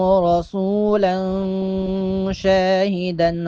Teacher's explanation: رسولا شاہدن یہاں اخفا کریں گے، آواز کو تھوڑی دیر کے لیے ناک میں چھپائیں گے